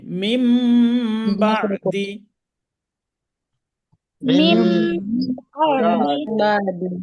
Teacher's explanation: নুন সাকিনের বামে বা থাকলে নুনটাকে মিম ধরে গুণনা করে পড়তে হবে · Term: ইকলাব